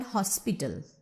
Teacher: So I hope it is clear to you that when there is no root word, for example, in the word hospital, it is stressed on the first syllable